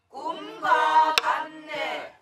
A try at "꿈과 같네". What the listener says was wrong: 그렇지.